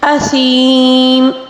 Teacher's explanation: یا مدہ ہے یہاں پر، اس کو بھی 3 الف کے برابر کھینچ کر پڑھیں گے، ٹھیک ہے، کیونکہ اس کے اگلا والا حرف جو ہے اس کو وقف کے دوران ساکن دے کر پڑھیں گے تو ہم یا مدہ کو 3 الف کے برابر کھینچ کر پڑھیں گے، ٹھیک ہے۔